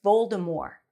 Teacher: in the movie they say Voldemort with a T, but apparently the author J.K. Rowling has confirmed that the T is not pronounced